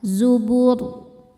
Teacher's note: Saat berhenti di huruf ro, ro-nya dibaca tafkhim karena sebelumnya dhammah. Maka bacanya tebal.